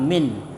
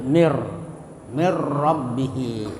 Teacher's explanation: Jadi nun mati itu dimasukkan ke dalam ra. Ya, jadi seolah-olah ra itu double atau ditasdid, mirra. Jadi bukan min tapi mir rabbihi. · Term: idgham bila gunnah